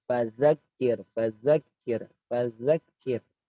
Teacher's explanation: Za itu jangan digigit tapi di ujung lidah